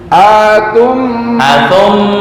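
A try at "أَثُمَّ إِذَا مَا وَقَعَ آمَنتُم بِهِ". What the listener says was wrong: Ma pendek.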